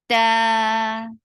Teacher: very sharp sound and 2 counts long